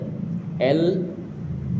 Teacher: H-nya kecil Pak ya. L, lidah kita di belakang gigi seri atas kita